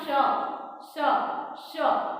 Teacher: આ શ, શ, શ નું ઉચ્ચારણ એમાં જીભને સંઘર્ષ કરવો પડે છે, એટલા માટે આને સંઘર્ષી વ્યંજનો કહેવાય છે.